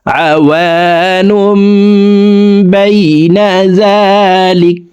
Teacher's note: তো এই তানউইনের পরে দেখুন ইকলাবের হরফ একটি মিম আসছে, এই যে ছোট্ট করে একটি মিম আছে দেখুন, এই মিমের সাথে গুন্নার সহিত পড়তে হবে। দেখুন আওয়ানুম আওয়ানুম বাইনা যালিক, কাফকে ওয়াকফের ক্ষেত্রে সাকিন করে ফেলবো।